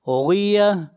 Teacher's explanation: غین حروف مستعلیہ میں سے ہے، غین کو بھی موٹا پڑھیں گے، اور آخر میں گول تا ہے، جب اس کے اوپر وقف کریں گے تو یہ ہا بن جائے گی۔